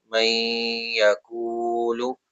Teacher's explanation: نون ساکن کے بعد یرملون لیٹر یا آیا تو یہاں ادغام کا رول ہو گیا، اس میں غنہ کریں گے ہم۔ میں، اس طرح جو کر رہے ہیں ہم یہ غنہ کر رہے ہیں، میں یقولو، کو ہم کھینچ رہے ہیں، واو مدہ اس وجہ سے۔